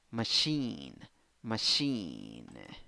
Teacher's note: two syllables the second syllable is the stressed syllable in the first syllable you have schwa oh in the second syllable you have e machine machine if